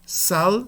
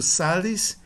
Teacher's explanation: O A é longo no nominativo singular, mas breve no genitivo singular.